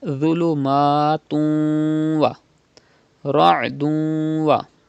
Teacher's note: And there is waw after tanween after 2 pesh. So idgham will be done because waw is from yarmalun letters, and gunna will be done.